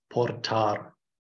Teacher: The R is always pronounced too, usually rolled.